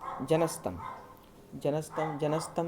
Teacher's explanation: विसर्ग के बाद त मिलके विसर्ग का स हो गया, सत्व संधि यहाँ भी है।